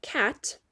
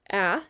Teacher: So like the word cat, I hear ah, and it's making it short vowel sound because the T is closing in that vowel